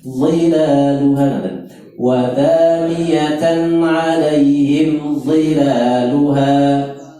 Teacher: ini sifatnya tebal, tempatnya sama di ujung lidah. Ujung lidah di ujung gigi, di pucuke utus sing inggil.